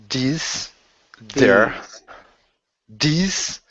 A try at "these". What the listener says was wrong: Okay, so you're doing the same thing. Your tongue isn't getting in the way. Okay, you got to stick your tongue. Your tongue's like a bouncer at a nightclub.